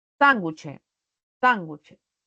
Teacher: tiene la mayor fuerza de voz en la antepenúltima sílaba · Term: esdrújulas